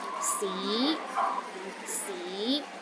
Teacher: The second tone starts with a low pitch and rises to a high pitch.